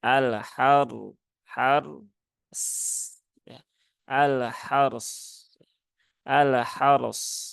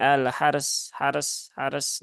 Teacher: yang sukun bertemu atau berhubungan dengan ee fathah pada huruf Ha berarti ra yang sukunnya itu dibaca dengan tebal